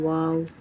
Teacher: वाव दोनों होठों को गोल करके अदा होता है।